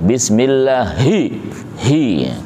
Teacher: Nah, supaya kita nanti terbiasa membedakan. Ha itu adnal halqi, tenggorokan paling bawah